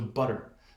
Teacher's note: actually kind of be spread out in a lateral position and you kind of brush what is known as the alveolar Ridge you kind of hike your tongue back really quickly · your tongue does not go forward it kind of brushes backwards and notice it's a very quick motion